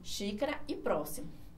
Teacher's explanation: a sílaba forte ela está aqui ó na antepenúltima então ela é classificada como proparoxítona